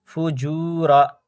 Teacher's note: کھینچائے گا کیونکہ یہاں پہ واو مدہ ہے، واو ساکن سے پہلے پیش ہے